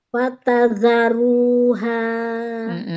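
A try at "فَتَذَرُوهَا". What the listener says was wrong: Zal keluarkan ujung lidah. Fatadharuha. Zalnya keluarkan ujung lidah.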